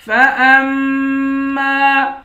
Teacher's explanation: حمزے کو میم کے ساتھ ملا کر میم پر غنہ کریں گے۔ میم کے بعد الف ہے، الف حروف مدہ ہے، ایک الف کی مقدار کھینچ کر پڑھیں گے۔